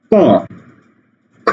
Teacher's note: বাতাসটা আটকে যায় ছেড়ে দিই তারপরে উচ্চারণ হয় এই যে এরকম বাতাসটা আটকে গেল ক খ ঠিক আছে এভাবে · কণ্ঠধ্বনি এই যে এটা এই যে এটা হলো কণ্ঠ, এই কণ্ঠে এসে বাতাসটা আটকে যায়, আটকে যাওয়ার পরে ক খ গ ঘ উচ্চারণ হয়। বাতাসটা আটকে যায়, ছেড়ে দিই, তারপরে উচ্চারণ হয়।